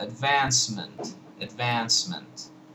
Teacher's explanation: You have advance and then ment, advancement. Now this last vowel in ment is really just a totally indefinite vowel. It's more like a schwa